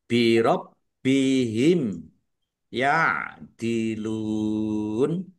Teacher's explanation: bnya dibaca dobel ada tasdidnya ditekan biar tampak dobelnya ya birabbihim mim Mim sukun bertemu dengan huruf ya.